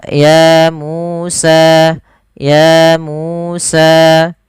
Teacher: harus sama panjangnya sepanjang dua harakat